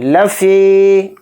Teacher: इंसान, इंसान एकदम नहीं पढ़ेंगे। लफ़ी, फ़ा के साथ या मद्दा है, फ़ा ज़ेर फ़ी को यहाँ थोड़ा खींचेंगे। लफ़ी, इस तरह से।